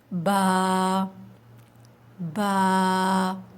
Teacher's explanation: جو اندر ہمارے دونوں ہونٹوں کے اندر تری والا حصہ ہوتا ہے وہ آپس میں جب ملتا ہے تو با ادا ہوتا ہے